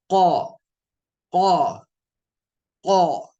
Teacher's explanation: जबान की जड़ को जब आप ऊपर तालू से लगाते हैं तो हर्फ क निकलता है · زبان کی جڑ کو جب آپ اوپر تالو سے لگاتے ہیں تو حرف قو نکلتا ہے